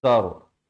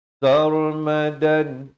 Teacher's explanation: sin baris fathah bertemu ra jadi tebal ra ni